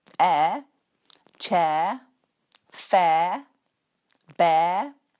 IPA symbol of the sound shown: eə